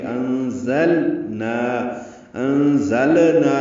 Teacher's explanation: زانی کی وجہ سے اخفا ہے، نون کی آواز چھپائیں گے، زا تیز صفیر کی آواز سے ادا کریں گے، لام کو ظاہر کر کے پڑھیں گے